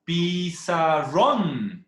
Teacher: Pi, sa, esas dos sílabas, pi y sa, son sílabas átonas. Y la sílaba ron llegaría a ser la sílaba tónica.